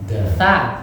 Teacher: gigi seri ujung lidah bertemu gigi seri bagian atas